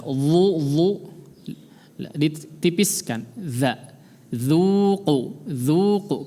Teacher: La yadhu, dhu, zal, pakai zal ya, jangan ditebalkan. Dhu, ditipiskan. Za, dzuqu, dzuqu.